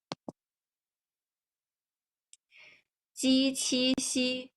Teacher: So we use the surface of the tongue and the hard palate when we are practicing 鸡、七. And the 七, you see as the picture shows, 七 has a real strong airflow come out from your mouth, while 鸡 doesn't. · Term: coronal sound